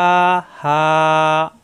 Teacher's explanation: মুখ খোলা থাকবে, হা কণ্ঠনালীর শুরু থেকে। এই হা কণ্ঠনালীতে চাপ দিয়ে একালিপ টান, এই হা কণ্ঠনালীর শুরুতে একালিপ টান।